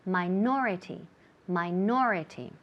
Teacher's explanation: the emphasis falls on the second syllable